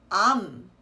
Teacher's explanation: the trick here is to not let your lips open again at the end so it's not um it's just um keep your lips closed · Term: M supporting consonant